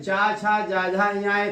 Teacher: फिर चा वर्ग के व्यंजन तालु है